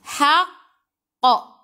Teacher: Apabila berhenti bacaan ada huruf qalqalah, ada baris sabdu, dia jadi qalqalah akbar, tebalah, paling tebal, paling kuat. Paling kuat, akbar, paling besar dia punya lantunan.